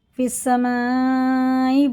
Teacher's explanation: مد متصل ہے، 5 الف کے برابر سے کھینچ کے پڑھنا ہے